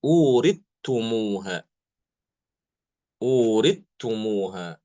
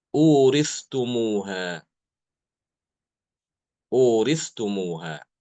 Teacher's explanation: Di mana Imam Hisham mengidghamkan ta ke dalam ta, ya. Imam Hisham mengidghamkan huruf ta itu ke dalam huruf ta.